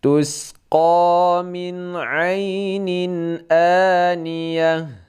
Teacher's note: aniyah ini yang panjang 2 harakat inilah mad badal. Pokoknya setiap ada hamzah, adapun alif seperti ini mad badal.